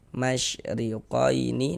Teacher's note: Di sini ada huruf ro, tapi dia memiliki harakat kasrah, memiliki baris kasrah, baris miring di bawah nih namanya harakat kasrah atau tanda baca kasrah. Maka ini huruf ro kita baca tarkik ya. Kita baca tipis.